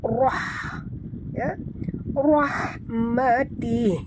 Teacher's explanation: Rah ra tebal. Ha jangan ya, jangan kasar bunyinya. Ini adalah ha pedas.